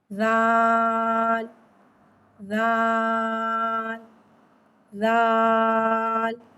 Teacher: जबान का सर और ऊपर के दांतों के अंदरूनी किनारे से अदा होता है ल में सीठी नहीं आती इसको बगर सीठी के पढ़ते हैं · زال کو ایک الف یعنی تین حرکات کے برابر کھینچ کے پڑھتے ہیں۔ زال حرف لساویہ ہے، زبان کا سر اور اوپر کے دانتوں کے اندرونی کنارے سے ادا ہوتا ہے۔ زال میں سیٹی نہیں آتی، اس کو بغیر سیٹی کے پڑھتے ہیں۔